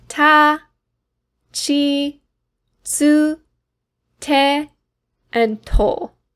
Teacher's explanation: Again, no “ti” or “tu,” we have chi and tsu instead